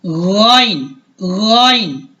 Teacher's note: حلق کے ابتدائی حصے سے حرف غائن ادا ہوتی ہے، یعنی گلے کا جو ابتدائی حصہ ہے، ٹھیک ہے، وہاں سے حرف غائن ادا ہوتی ہے، جیسا کہ آپ کو یہ تصویر میں بھی نظر آ رہی ہے جہاں سے گلے کی ابتدا ہو رہی ہے، ٹھیک ہے۔ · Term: غائن کا مخرج